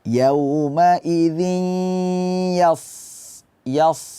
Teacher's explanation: Di situ ada tanwin ketemu dengan ya. Maka hukumnya adalah idgham bi gunnah, hadirkan suara ke hidung. Yauma idzin yas.